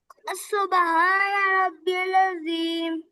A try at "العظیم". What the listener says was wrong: آئین کو کلیئر کریں، مجھے آئین کی بات نہیں، آئین زبر عظیم، ٹھیک ہے؟ گلے میں ریورس، اپنی زبان کو پیچھے ریورس میں لے کے جائیں،